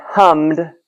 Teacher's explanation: without another syllable because it ends in m, not D or T